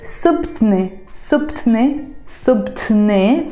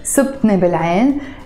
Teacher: pronounced very fast as subtne bilayn, almost like the T is disappearing